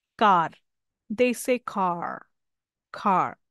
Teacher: The car in the word called car, the R is not pronounced. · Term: non-rhotic